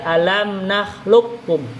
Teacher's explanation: Kop dengan kaf itu udah dekat, itu sama-sama pangkal lisan, langit-langit atas. Kop itu lebih atas, kaf lebih dekat, lebih bawah. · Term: mutaqariben